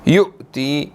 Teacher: حمزہ یہاں پر ساکن ہے تو جھٹکا دے کر پڑھیں گے